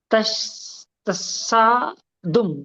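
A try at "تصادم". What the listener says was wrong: तशद्दुम तो नहीं है? शेन है कि सेन है? तसादुम, तसादुम।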